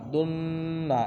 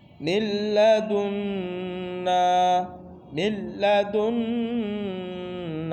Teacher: এখানে ওজিব গুন্না আছে এক আলিফ টান আছে